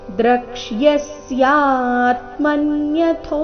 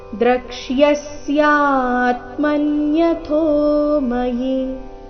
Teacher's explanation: ಶೇಷೇಣ ದ್ರಕ್ಷ್ಯಸ್ಯ, ಇಲ್ಲಿ ಕ್ಷ ಅಧಿಕ ಯ, ಕ್ಷ್ಯ ಈ ರೀತಿ ಇದೆ. ದ್ರಕ್ಷ್ಯಸ್ಯಾತ್ಮನ್ಯಥೋ, ಥೋ ಇಲ್ಲಿ ಮಹಾಪ್ರಾಣ ದೀರ್ಘ.